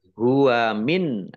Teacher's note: nun sukun bertemu dengan huruf Ain bacaan izhar dibaca jelas